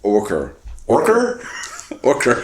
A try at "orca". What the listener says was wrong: there's no R in that word